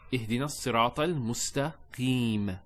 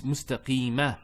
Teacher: There's a fatha there, but we don't pronounce that fatha when we stop. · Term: sukoon